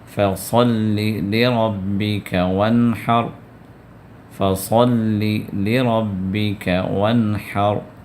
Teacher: اور را کو پورا ادا کرنا ہے، کیونکہ را کو جزم ہے، اس سے پہلے زبر آ گیا، فتح آ گیا، تو ایسی صورت میں بھی را کو پر کر کے آپ ادا کریں گے